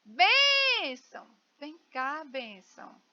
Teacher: Olha, eu demorei mais na bem, sílaba bem. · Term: sílaba mais forte